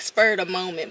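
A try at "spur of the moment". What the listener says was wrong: Spur, not spurred. Yeah, S-P-U-R.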